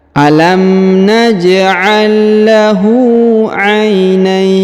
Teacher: Huruf na di ayun dipanjangkan boleh 2, boleh 4, boleh 6 ya. Karena di depan huruf na terdapat ya sukun sebelum huruf pemberhentian.